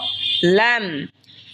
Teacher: এরপর হলো লাম, লাম জিহ্বার আগার কিনারা সামনের ওপরের মারির দাঁতের সঙ্গে লাগা উচ্চারণ হবে লাম